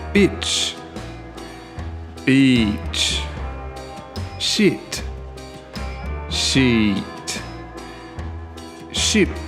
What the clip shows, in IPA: ɪ and iː